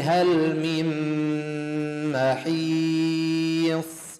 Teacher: نون ساكن بعد ميم إدغام، ندغم النون بالميم فتصير عنا إدغام ناقص بغنى يمد حركتين